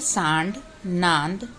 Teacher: चिन्ह जिसमें शिरो रेखा के ऊपर चांद और बिंदु आता है इसके उच्चारण के समय हवा नाक तथा मुख दोनों से दबाव के साथ बाहर निकलती है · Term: अनुनासिक